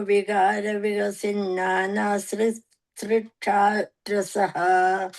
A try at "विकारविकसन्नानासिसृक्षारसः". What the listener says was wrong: that fourth line, you are saying vikasin, it's vikasan.